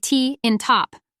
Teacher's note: stop sounds where the air flow stops briefly giving us sharp quick sounds like T in top